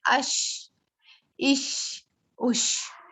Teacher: شین کی ادائیگی میں آواز مخرج سے پھسلتے ہوئے نکلتی ہے, جیسے ہم نے کوئی اس میں مشقت نہیں کرنی پڑتی ہے.